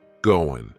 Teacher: that final g in the word going is going to be cut off and we'll just say going let's try to say that all